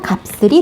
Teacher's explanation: 발음했을 때 이 비읍과 시옷이 서로 만나면서 된 소리가 됩니다